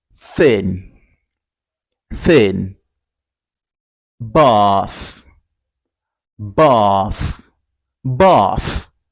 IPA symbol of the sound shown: θ